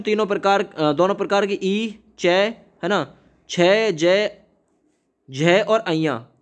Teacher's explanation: ऐसे वर्ण जिनके उच्चारण में जिह्वा तालु को स्पर्श करके निकलती है, तालव्य वर्ण कहते हैं।